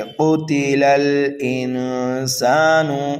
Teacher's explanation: لام کو لام ساکن میں ملائیں گے